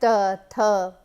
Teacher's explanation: The tongue hits the teeth, and when the tongue hits the teeth, it blocks the air and then it is released. Those sounds are dental sounds like th, th.